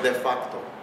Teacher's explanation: eu coloco a sílaba forte no A, mas eu pronuncio o O